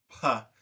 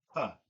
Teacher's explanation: You can feel that there's a increase of pressure in your mouth and then you let it off to make the puh. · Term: high pressure consonant